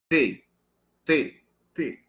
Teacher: há também a chamada oclusiva alveolar desvozeada essa não há vibração das cordas vocais por quê Porque é desvozeada qual o tipo de obstrução total por isso é oclusiva por